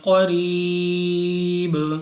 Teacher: را کے نیچے زیر تو را کو باریک پڑھیں گے